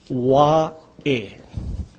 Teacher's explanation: See, the A in this last word is kind of pronounced Wa'e. This is the Okina, or the glottal stop. That's the punching sound.